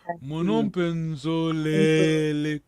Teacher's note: Zolele tem o primeiro E, tem lá o acento vogal longa.